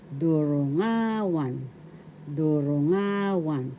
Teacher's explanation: First syllable du, second syllable ru, third syllable nga, fourth syllable wan. The accent is in the third syllable nga.